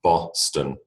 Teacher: it is the schwa in the second position